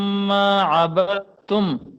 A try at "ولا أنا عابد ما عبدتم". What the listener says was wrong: یہ غنے کو تھوڑا سا اور کریں، آپ نے کم کیا ہے، دوبارہ پڑھیں، میم الف ما لال لکھا ہے نا، غنہ کرو۔